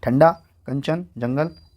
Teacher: अनुस्वार के उच्चारण में वायु नाक से निकलती है और उच्चारण झटके के साथ होता है, जैसे ठंडा, कंचन, जंगल इत्यादि।